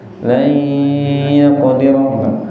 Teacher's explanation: Jadi tandanya selain suaranya benten, ini hidungnya getar. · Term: bi gunnah